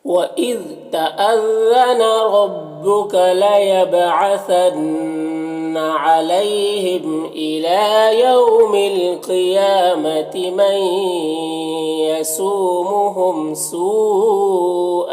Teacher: سو میں جو مد ہے مد متصل ہے، اسے 3-4 الف کے برابر کھینچ کر پڑھتے ہیں